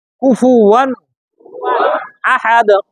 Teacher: এই ওয়াও জবর, ওয়াওর উপর কয় জবর, এই দুই জবরে গোপন নুন সাকিন, সামনে হামজা আসছে স্পষ্ট হবে